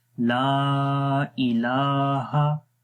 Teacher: لام کو لمبا کریں گے الف کی وجہ سے اور مد کی وجہ سے